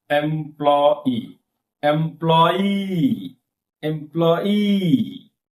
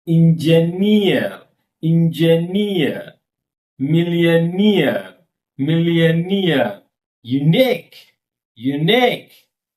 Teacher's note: For all this example, observe one thing, stress fall on last syllable.